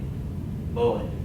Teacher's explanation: Not quite as much air as in English, but a B.